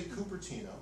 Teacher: Californians do not use the liquid U. So we say Cupertino, we don't say Cupertino, the way they might in other parts of the country.